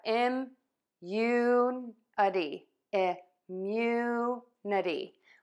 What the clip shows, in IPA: ɪmˈjunəti